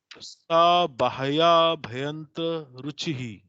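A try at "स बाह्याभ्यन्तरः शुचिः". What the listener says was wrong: अभ्यंतरः शुचि ही, शुचि ही, रुचि नहीं है, शुचि। शुचि माने शुद्धि, शुद्धता।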